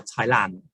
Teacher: quite often you'll hear thailand and forgetting that final d